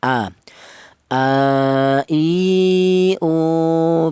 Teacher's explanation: Untuk huruf hamzah ini keluarnya huruf berasal dari pangkal tenggorokan.